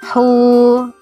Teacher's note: hu di sini juga mad tabi'i atau mad asli, 2 ketukan, jangan panjang-panjang. Hu 2 ketukan ya, 1 alif.